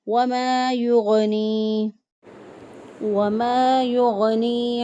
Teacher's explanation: اس کو پڑھیں گے وَمَا يُغْنِي، منظر یعنی یا مدہ ہے، یا ساکن سے پہلے والے حرف کے نیچے زیر، ایک الف کے برابر اس کو لمبا کر کے پڑھیں گے